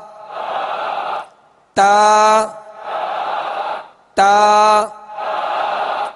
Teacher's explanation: زبان کی نوک اور اوپر کے دانتوں کی جڑ